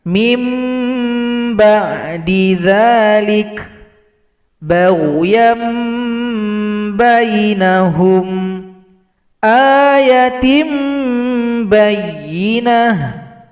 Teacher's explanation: untuk membaca hukum bacaan iqlab ini boleh kita tutup bibir kita dengan rapat, boleh juga dibuka sedikit setipis kertas.